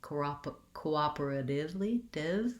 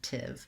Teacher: my letter t says more of a d sound in this word it's a flap t cooperatively div rather than tif i can use a regular t